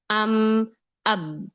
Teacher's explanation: Yang pertama merapatkan keduanya yaitu huruf mim dan huruf Ba.